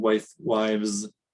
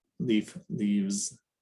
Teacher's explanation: the voiceless letter it's transcribed and pronounced with the voiced sound there are some words that switch from f to v when they go plural